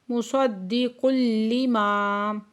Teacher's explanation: مصدق لما، دال مشدد ہے، سختی سے پڑھیں گے، اور تنوین کے بعد لام مشدد ہے، یہاں پہ ادغام یرملون بلا غنہ ہو رہا ہے۔